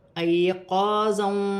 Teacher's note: یا ساکن سے پہلے زبر آ رہی ہے تو یا لین بنے گی، اسے کھینچا نہیں جائے گا